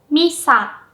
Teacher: mi is pronounced with a high pitch while sa is pronounced with a low pitch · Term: pitch accent